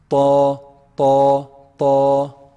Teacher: the top part of the tip of the tongue when it hits the roots of the upper incisors. It's a heavy letter.